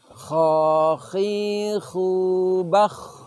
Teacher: Dari segi lidah, sifat dari huruf kha adalah isti'la, yaitu terangkatnya lidah. Jadi lidah kita itu terutama yang bagian belakang terangkat ke atas.